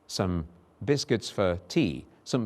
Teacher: Notice also the existence of vowel schwa there at the beginning, some, and then for